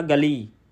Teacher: ਗਲੀ ਥੋੜਾ ਨੱਕ ਦੇ ਵਿੱਚ ਆਵਾਜ਼ ਦੇਣੀ ਆ ਤੇ ਗੱਲੀ ਨਹੀਂ ਕਹਿਣਾ